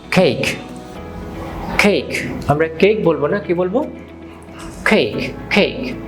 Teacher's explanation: The back of your tongue goes up and you are going to push out some air